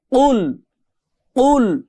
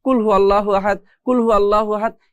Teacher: এই কফের উচ্চারণ হয় গলার মধ্যে ধাক্কা দিয়ে, কুল কুল, এরকম একটা ধাক্কা গলার মধ্যে দিয়ে, বা আমাদের জিহ্বার যে মাঝখানের পিঠ আছে এটা উপরের সাথে বাড়ি খেয়ে আমাদের এই কফটা উচ্চারণ করতে হয়।